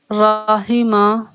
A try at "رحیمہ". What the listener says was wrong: ہا کو اور واضح کیجیے، رحیمہ۔